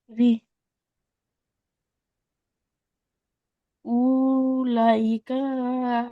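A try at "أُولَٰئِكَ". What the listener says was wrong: ও টান হবে না, কারণ ওর উপরে সাকিন নাই, হামজার উপরে পেশ, লামের উপরে খাড়া যাবার। উলাইকা।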